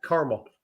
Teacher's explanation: So you just dropped the second A. The second A is silent.